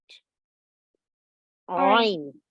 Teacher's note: Softly pronounced from the middle of the throat, a typical letter of Arabic, a letter of the throat.